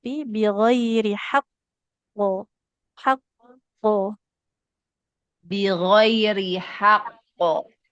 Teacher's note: tipiskan yang tebal hanya qofnya saja